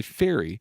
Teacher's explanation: do the F sound you'll notice there's no vibration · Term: unvoiced consonant